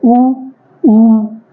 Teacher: जो साउंड मुंह है हमारा वो थोड़ा सर्कुलर हो रहा है, ठीक है। उ, ये आप जब बोलते हैं उ, तो ये सर्कुलर हो रहा है और इसमें से हवा क्या हो रहा है, पास हो रही, तो यहाँ से साउंड निकल रही है। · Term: ओष्ठ